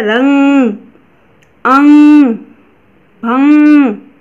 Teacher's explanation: हवा नाक से निकलती है और जोर लगा के उच्चारण किया जाता है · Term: अनुस्वार